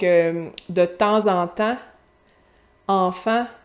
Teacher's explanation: c'est le « an ». Très, très par en avant de la bouche.